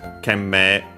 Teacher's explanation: It's worth mentioning that actually the me of Kenmei, actually mei or me, depending on the pronunciation, in standard Japanese nowadays it would be long e simply, but there's also the other variant.